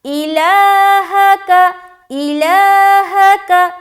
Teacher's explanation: کہاں لمبا کریں گے؟ لام میں۔ اپنی آواز کو لمبا کہاں کرنا ہے؟ لام میں۔ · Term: کھڑا زبر